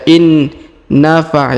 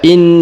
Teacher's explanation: huruf na yang pertama yang nun sukun ini Menghilang melebur ke huruf na Yang bertasdid ya Jadi tidak dibaca in Nafa ya tapi dibaca in langsung